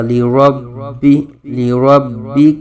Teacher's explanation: ربی با مشدد میں جماؤ کے ساتھ کلکلہ کریں گے. را پر زبر ہے.